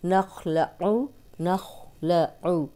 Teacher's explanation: आइन की पेश को लंबा नहीं करना